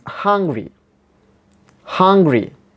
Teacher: primary stress, or the main stress is given in the first syllable